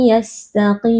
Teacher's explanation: Kita memasukkan nun sukun ke dalam huruf ya disertai dengan gunnah mutawwalah atau dengung yang dipanjangkan.